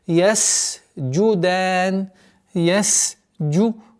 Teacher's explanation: нужно до конца произносить свойство свист у звука син, потому что если мы будем аннулировать, она переходит в звук зай. Ясджудан, что является грубой ошибкой.